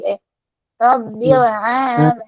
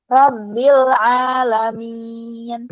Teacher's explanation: Jadi i-nya tengah lidahnya dinaikkan ke atas.